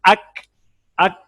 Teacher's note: یہ زبان کی جڑ یہاں لگنے کی وجہ سے یہ آواز موٹی ہو گئی تھی، اور اس میں قلقلہ بھی تھا. کاف میں ایک تو آواز باریک ہے اور دوسری ہے اس میں آواز بند ہو جاتی ہے. اک، مکمل آواز بند ہو جائے گی اک.